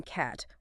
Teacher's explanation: more open vowels like A in cat, where the tongue is lower